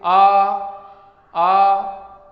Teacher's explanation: आ बोल रहे हैं तो कंठ जो है, आ का उच्चारण स्थान जो है कंठ है, तो वो कंठ का विकास हो रहा, विवृत हो रहा है, वो खुल रहा है।